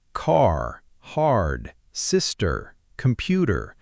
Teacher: In American English, the R sound is pronounced almost every single time it appears in a word. Words like car, hard, sister, computer, they all have a strong, clear R sound at the end or in the middle.